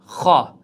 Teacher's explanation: xo harfi halqumning yuqori qismida joylashgan. Xo harfining chiqadigan o'rni halqumning yuqori qismi mana bu joyda.